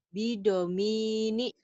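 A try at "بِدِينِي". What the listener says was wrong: Kok Bidomi sih? Ah, mie dari mana? Ayo, lihat. Yang panjangnya mana?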